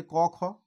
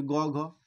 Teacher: ক খ বলতে যতটা ভারিত্ব আসে, কিন্তু গ ঘ বলতে কিন্তু একটু বেশি ভারিত্ব আসে। সেই জন্য এই গ ঘকে কিন্তু ঘোষ ধ্বনি বলা হয়।